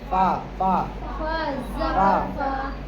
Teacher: ऊपर के दांतों का सिरा नीचे के होठ से मिलते हैं